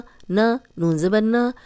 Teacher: اب نون کی جو زبر ہے اس کو لمبا ہونے سے بچانا ہے ہم نے